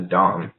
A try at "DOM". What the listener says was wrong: Well, you sound like you're saying dog.